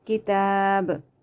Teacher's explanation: you have to do qalqala here a bit, because when you're gonna stop here, so there's qalqala on this ba.